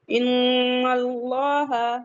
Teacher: नून का मखरज हमारी जो टंग की जो टिप है टंग का जो किनारा है हमारी जुबान का जो किनारा है तो हमारे जो ऊपर फ्रंट वाले टीथ है सनाए औलिया उनके मसूड़े से जाके लगेगा